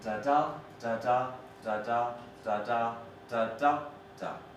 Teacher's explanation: so stressed beats follow unstressed ones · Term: feminine ending